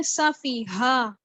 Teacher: ہا جو ہے حروف حلقے میں سے ہے اور اقصی حلق سے ادا ہوتا ہے، چیسٹ سے نکالنا ہے اس کو